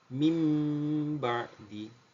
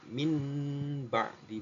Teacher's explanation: bertemu dengan satu huruf saja huruf ba cara membacanya ya kan Nun sukunnya atau tanwinnya dirubah menjadi suara mim · Merubah nun sukun menjadi mim.